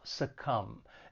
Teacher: it has two syllables and the stress is on that second syllable succumb and just keep in mind there is a silent B